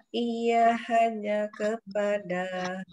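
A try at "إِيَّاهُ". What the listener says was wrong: Panjang Bu. Iya, ya enggak panjang dikit. Iya, iya, dua harokat lah.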